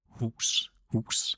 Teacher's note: It comes from your glottal area, from your stomach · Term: H sound